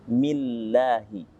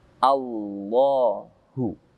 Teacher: Di sini kalimat Allah didahului dengan mim kasroh atau mi. Maka Allah dibaca tipis.